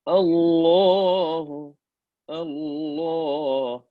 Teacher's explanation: Lam is going to be full mouth every time we say Allah.